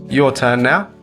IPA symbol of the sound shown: ə